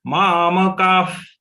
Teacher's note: The visarga to be pronounced as F. Just we have to release some air from our mouth.